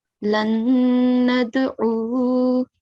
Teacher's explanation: the last mutaharrik letter, which is waw, will change into a sakin letter